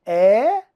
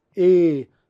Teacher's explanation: quando você tem uma vogal aberta a articulação é mais aberta a boca fica mais aberta